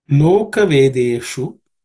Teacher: In terms of pronunciation, the first word does not have any aspirated consonants, but the shu is cerebral sha, so the tip of the tongue should point towards the roof of the mouth